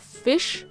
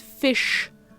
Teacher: In this word, it sounds really similar in comparison, but the sound we make with a sh is actually a little deeper than just a sh. You have fish, which is made with your tongue kinda in the front of the mouth, and fish, where your tongue curls in the back and makes a lot of room in your mouth for that rich sh sound.